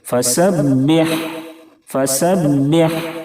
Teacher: با کے اوپر تشدید ہے اس لیے با کو تھوڑی سی سختی سے پڑھیں گے۔ ہا کو درمیانی حلق سے بالکل صاف ادا کریں، کھڑکھڑاہٹ کی آواز نہ نکلے